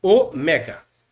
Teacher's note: Eu vou fechar o ômega, tá? Ômega. Ele é mais demorado que o ômicron.